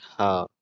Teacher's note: गले के भीतर स्वर यंत्र के मुख से निकलते हैं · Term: स्वर यंत्र मुखी